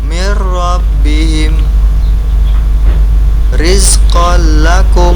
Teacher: nun sukun atau tanwinnya ketika bertemu dengan huruf lam dan ro tidak dibaca dengung. · Jadi huruf lam dan ra-nya tidak dibaca dengung. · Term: bila gunah, idgham bila gunnah